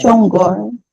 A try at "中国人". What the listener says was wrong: No, you need to go high. Yeah, go to highest point of your voice. 中国人.